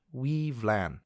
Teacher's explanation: the W there makes a W sound, the Y actually makes an EE sound, the F sounds like a V, and LAN just sounds like LAN.